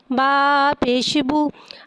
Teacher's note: रॉ के ऊपर पेश है, पेश को होठों की गुलाई के साथ अदा करके पढ़ेंगे। रॉ के ऊपर पेश है, लिहाजा रॉ को यहाँ मोटा अदा करके पढ़ेंगे।